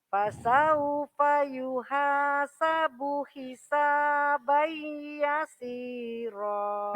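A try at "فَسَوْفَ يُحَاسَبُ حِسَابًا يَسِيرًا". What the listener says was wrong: Nah, gitu bagus. Lanjut.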